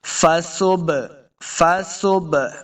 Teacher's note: فصبح، فصب، فا کو تلفظ سے پڑھیں گے صبح، سین پیش با صبح، سین پہ سیٹی کی آواز آئے گی، با حروف قلقلہ سے ہے، قوف تو با جیم دال، قوف تو با جیم دال، یہ حروف قلقلہ سے ہیں، با آ گیا وہاں سے، تو با ساکن ہے، اب ہم نے اس کو خوب واضح کر کے پڑھنا ہے، ہلا کے پڑھنا ہے